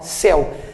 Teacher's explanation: Porque quando a gente fala céu, o som sai todo pela boca. Ó, céu. Não existe a passagem do ar pelo nariz. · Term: oral